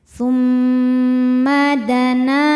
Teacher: cara bacanya berdengung tahan dengungannya kurang lebih dua harakat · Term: ghunah musyaddadah, gunnah musyaddadah